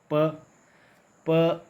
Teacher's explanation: प एक ऐसी ध्वनि है जिसका उच्चारण स्थान है होठ, इसलिए ओष्ठ्य कहलाता है। प वर्ग के सभी व्यंजन जो है वो होठ का प्रयोग करते हैं बोलते वक्त, इसलिए ये वर्ग क्या है?